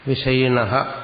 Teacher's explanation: സകാരം വന്നു കഴിഞ്ഞാൽ നമ്മൾ പിരിക്കുമ്പോൾ ആ സകാരത്തിന്റെ സ്ഥാനത്ത് വിസർജം ഉച്ചരിച്ചാൽ മതി വിസർഗം ഉച്ചരിക്കുന്നത് സാധാരണ ഹ എന്ന് ഉച്ചരിക്കും ശരിക്കും ഹ എന്നുള്ള ഉച്ചാരണമല്ല